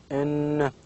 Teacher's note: There is a complete closure between the tongue and the alveolar ridge. There is a complete contact here, and the air goes out of the vocal cord, out of the nose.